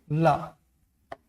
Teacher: ला आप बोलेंगे ना तो पहले जीभ ऊपर उठेगा और सट से नीचे गिरेगा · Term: पार्श्विक